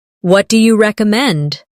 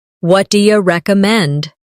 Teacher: Notice how do you becomes dia in casual conversation.